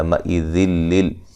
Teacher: نون تنوین کا ادغام بلا غنہ ہے، غنہ نہیں کریں گے